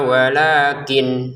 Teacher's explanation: nun sukunnya dibaca jelas karena belum kita pertemukan dengan lam. Kalau dipertemukan dengan lam, maka kita masukkan nunnya ke lam.